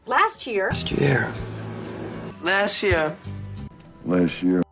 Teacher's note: 这里的▁t▁后面可别加一个不存在的中央元音▁a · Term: 省音